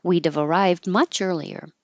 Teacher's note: you won't hear a d you'll just hold the tongue in the D position · it hadn't been for the traffic pause we'd have we' have we would have contracted and that V connects